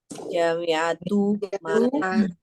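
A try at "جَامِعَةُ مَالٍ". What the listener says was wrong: Nah, nggak perlu panjang, nggak perlu panjang. Karena dia nanti pakai dhamma. Nah, jami'atul mali. Baik secara tulisan maupun bacaan semuanya pendek.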